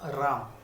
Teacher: আকারের আগে একটা র বসিয়ে দেওয়া হলো, অর্থাৎ শব্দের আগে একটা র ব্যঞ্জনধ্বনি নিয়ে আসা হলো, তাই একে বলা হয় আদি ব্যঞ্জনাগম।